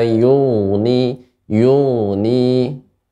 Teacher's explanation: Gain merupakan huruf yang istila, tebal namun dia mengalir rakhawah makhrajnya.